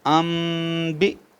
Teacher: اب نون ساکن کو میم سے بدل دیں گے کیونکہ آگے با آ گیا تو اس کو ان کو اب ام پڑھیں گے.